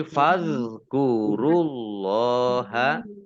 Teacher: Allahnya dibaca tebal karena harokat di depannya dhammah.